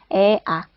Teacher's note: 저모음은 혀의 높이가 낮은, 그러니까 턱의 높이도 낮고, 즉 입이 가장 많이 벌어지는 모음이었어요. 아 하는 크게 벌리는 모음이었죠.